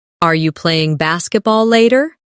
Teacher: In fast speech, are you can sound like are ya